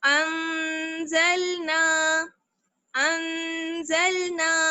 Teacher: ایک الف کی برابر ٹھہریں گے, ناک میں آواز جائے گی اور نون کی آواز چھپ جائے گی